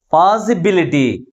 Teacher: Last నుంచి third syllable మిగిలిన syllables కంటే ఎక్కువ ఫోర్స్ గా పలుకుతుంది. And also this word ends with ITY suffix. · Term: ప్రైమరీ స్ట్రెస్